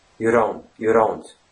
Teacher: it's somewhere in between td and a little bit of r sound mixed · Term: flat t